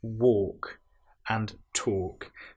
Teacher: in both of these words, walking and talking, we have the L, which isn't produced. It's not we don't hear the l wal it's walk and talk.